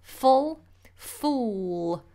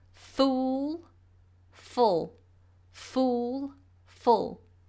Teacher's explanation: we want to have rounded lips full fool both of them require a dark L